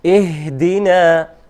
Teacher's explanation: But so we pay special attention to letter ha, and also the ha is letter of hams. So نفس. So the airflow continues. Also airflow of sound and breathe.